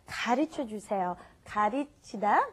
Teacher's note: right in between the r and l in English it's more like a d